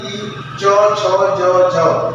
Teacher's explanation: ई च छ ज झ य आदि का उच्चारण तालव्य से होता है।